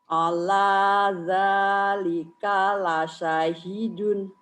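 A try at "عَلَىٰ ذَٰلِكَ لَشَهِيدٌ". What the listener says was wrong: Salah bacanya, penekanannya salah. Ayo, coba lagi.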